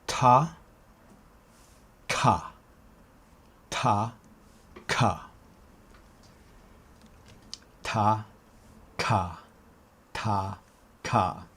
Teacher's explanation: to get to k the back of the tongue has to touch the roof of the mouth and then it opens